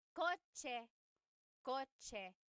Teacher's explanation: The ch sound is a TS combination.